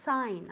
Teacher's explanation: I don't want to hear that g anywhere okay it's silent totally silent really we say sign as if it were s-a-i-n sign okay